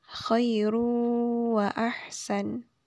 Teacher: Karena ada dhammatain bertemu dengan huruf waw. Jadi cara bacanya yaitu dengan ditahan 2 harokat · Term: idgham bila gunnah